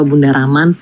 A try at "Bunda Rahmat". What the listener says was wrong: Bukan Bunda Rahman, bukan Bunda Rahman, Bunda Rahmat. Belakangnya Bunda Rahmat.